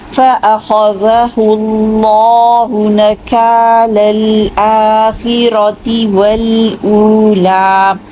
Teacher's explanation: آرام سے پڑھیے اور اس کو ٹائم دیجئے، لام کو مشدد ہے ویسے بھی، اتنی جلدی نہیں چھوڑنا